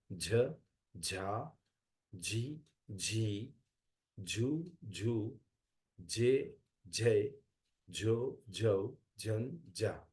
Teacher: this is aspirated sound it comes from the throat